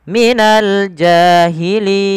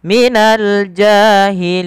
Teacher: Kemudian pada lafal lin ada kita panjangkan di sini dengan bacaan mad arid disukun, yaitu mad yang terjadi ketika kita wakafkan huruf akhirnya yang mana sebelumnya ada huruf mad. Maka bacaan linnya kita boleh panjangkan 2 harakat, boleh 4 dan boleh pula 6 harakat. Minal jahilin, 2 harakat.